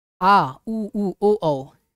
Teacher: जीभ के पीछे वाले भाग से उच्चारण हो रहा है तो उसको पश्च स्वर बोलेंगे